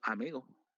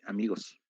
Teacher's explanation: digo amigo, en lugar de amigos, se come la S